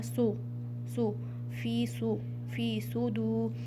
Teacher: अरबी में तफखीम कहते हैं मोटा पढ़ने को, हैवी साउंड। तो यहाँ पे आपने साद को भी हैवी साउंड के साथ पढ़ना है। सू नहीं कहना है, वरना तो सीन की साउंड बन जाएगी।